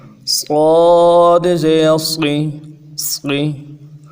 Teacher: موٹے کے چکر میں اس حرف کو کھینچیں گے نہیں، جھٹکا نہیں دیں گے، صرف موٹا کریں گے